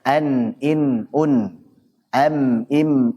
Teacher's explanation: Suara dengung yang dimiliki nun dan mim yang keluar dari al-khayshum. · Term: gunnah